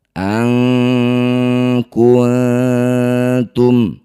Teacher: Ganti nunnya jadi eng. Dengungkan dua harakat.